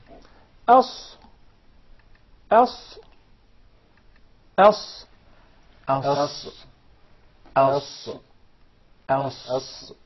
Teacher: the letter Sad comes from the tip of the tongue and the palates of the two top front incisors at a point just above the two front lower incisors